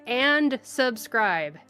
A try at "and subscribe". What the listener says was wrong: You gotta pronounce it. You gotta pronounce the D and subscribe. Yeah, that's a bit of a weakness of language, is that sometimes syllables kind of roll into each other. Plosives don't get stated.